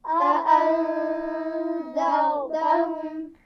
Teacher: इसमें रा मोटी पड़ी जाएगी, रा साकिन है ना, तो हमने ये उसूल पढ़ा हुआ है कि उससे पीछे अगर ज़बर पेश हो तब भी रा को हम मोटा पढ़ेंगे।